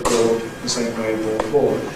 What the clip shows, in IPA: bɔːd